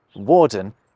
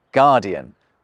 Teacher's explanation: where Norman French used a “w” sound at the start of a word, the Central French dialect tended to use a ‘“g”